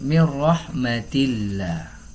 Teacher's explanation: lafaz Allah dalam ayat ini dibaca dengan tipis